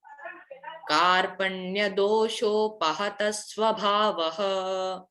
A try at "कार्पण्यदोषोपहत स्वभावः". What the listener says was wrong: वो श है, स नहीं।